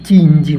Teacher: இடை நாவு வந்து நடு அண்ணத்தை தொடுவதால் தோன்றும்